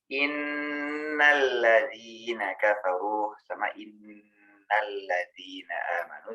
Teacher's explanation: Nun yang bertasjid hendaklah dibaca guna. Dengung ke hidung yang nyata. Panjangnya 2-3 harokat.